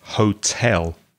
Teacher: the stress is on the second syllable not the first